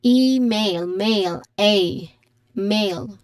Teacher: So there is a dip thong, a clear dip thong sound here. And then the stress is on the first syllable with a long e sound